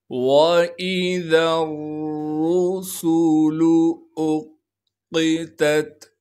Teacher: را پر پیش ہونے کی وجہ سے را کو موٹا کر کے پڑھیں گے اور بغیر کھینچے پڑھنا ہے۔ سین کی سیٹی کو صاف کر کے ادا کریں گے اور سین پر پیش ہونے کی وجہ سے اس کو کھینچنا نہیں ہے۔ · وَإِذَا الرُّسُلُ أُقِّتَتْ، حمزہ کو قاف سے ملائیں گے اس لیے کہ قاف پر تشدید ہے، قاف کو موٹا کر کے پڑھیں گے اور قاف پر تشدید ہونے کی وجہ سے تھوڑا سا ٹھہراؤ رکھیں گے اور اس تا کو آگے دوسرے تا سے ملائیں گے اس لیے کہ دوسرا تا ساکن ہے۔ · سین کی سیٹی کو صاف کر کے ادا کریں گے اور سین پر پیش ہونے کی وجہ سے اس کو کھینچنا نہیں ہے۔ بعض لوگ اس سین کو پیش ہونے کی وجہ سے کھینچ دیتے ہیں، لام پر بھی پیش ہے، اسے بھی بالکل نہیں کھینچنا۔